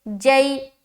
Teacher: یا لین کو نرم آواز کے ساتھ جلد اور معروف پڑھیں گے